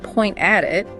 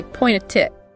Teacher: The T at the end, point, blends with the A and at. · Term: linking